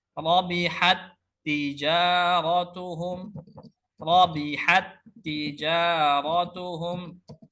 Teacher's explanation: Rabihat, rabihat ya, mengalirnya nafas ketika pengucapan huruf rabihat. Tapi ketika diidghamkan maka sifat hamsnya hilang ya. Seakan-akan kita baca satu tak saja.